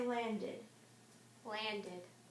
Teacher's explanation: the Ed says D instead of T like in look okay well that's because that sound is voice okay all right